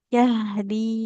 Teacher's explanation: Huruf ha sukun mengalir dulu suaranya. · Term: Huruf H sukun